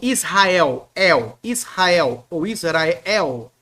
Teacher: o l vai virar u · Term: lambda pós vocálico